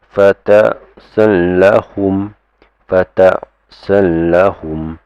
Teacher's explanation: Okay, and then this means lam and ra, gives you idgham bila ghunna, meaning is to merge but do not give it its nasalization